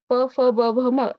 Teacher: याचा उच्चार हा ओष्ठाच्या माध्यमातून म्हणजे आपल्या ओठाच्या माध्यमातून केला जातो